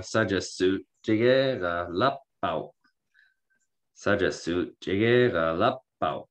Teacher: there's no glottal stop in the middle of this, and your English habits are going to make you want to do it.